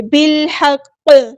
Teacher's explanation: جب ہم ساکن کریں گے تو یہاں پہ قلقلہ ہوگا، اس کو ہلائیں گے · یہاں پہ لام قمریہ ہے، اس کو ہم ظاہر کریں گے، ہا کو وسطی ہے لیکن مڈل تھروٹ سے ادا کریں گے